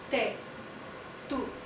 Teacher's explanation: we're actually touching the tip of our tongue to the back of our teeth when we say te.